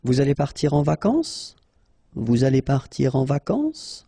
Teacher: You should raise your voice a little bit at the end just to inform the person that it's a question